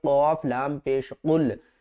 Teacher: یہ جو قاف ہے یہ کلرفل ہے، سبز رنگ ہے تو اس کو ہم موٹا پڑھیں گے